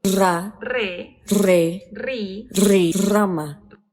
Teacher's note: ese es un sonido vibrante R que también debiera ser alveolar, pero lo hace entre dientes.